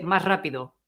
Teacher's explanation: you've missed almost completely the S